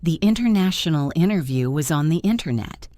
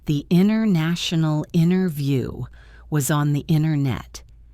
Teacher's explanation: Now let's look at a similar phenomenon where the letter T disappears completely after the letter N.